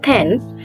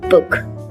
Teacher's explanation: For example, P and B are produced with the same lip position. However, P is voiceless, as in pen, while B is voiced, as in book.